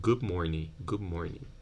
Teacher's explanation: Yeah, you don't say good morning, but you close your lips here, anticipating the bilabial position for m, and you end up saying good morning.